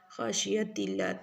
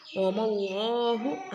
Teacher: لفظ اللہ ادھر باریک پڑھا جائے گا نارمل پڑھا جائے گا موٹا نہیں پڑھیں گے